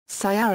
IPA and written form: siːˈɛrə (Ciara)